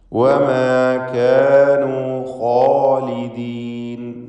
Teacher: ഖാഇനും അലിഫിനും തഫ്ഖീമാണ്, തടിപ്പിച്ച് ഉച്ചരിക്കണമെന്നർത്ഥം